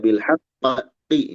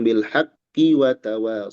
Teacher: Nah, ketika disambung ee di sana tidak ada qalqalah, kita hanya hentakan bilqiq. Kita hanya menghentakkan di tasdid ya. Di sini enggak ada panjang dan tidak nyeklek. · Di sini enggak ada panjang dan tidak nyeklek. Hati-hati. Tidak bilhaqi misalkan tidak.